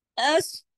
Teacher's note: फिर देखिए अस, स्वाद है ना, स्वाद को सीन की तरह नहीं पढ़ते। अस, स्वाद को हैवी पढ़ते हैं